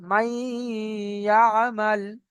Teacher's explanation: ইয়ার উপরে তাসদিদ আসার কারণে ইয়াটাকে সরাসরি গিয়ে মিমের সাথে লাগবে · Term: ইদগামে নাকিস